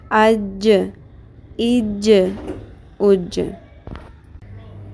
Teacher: جیم کے مخرج میں زبان کا درمیان والا حصہ اوپر کے تالو سے ٹکرا کر جدا بھی ہوگا